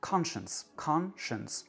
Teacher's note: C'est la première syllabe qui est prononcée pleinement et toutes les autres syllabes sont réduites. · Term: réduction vocalique